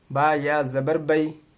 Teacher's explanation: اب دیکھیے یہاں یا ساکن سے پہلے زبر آ رہا ہے تو اس کو جلدی پڑھیں گے، حروف لین ہے یہ، با یا زبر بئی، اس طرح سے جلدی پڑھنی ہے۔